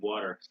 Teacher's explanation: So T becomes D in some accents in America.